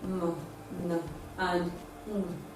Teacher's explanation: So all nasal sounds are voiced. None of them is voiceless.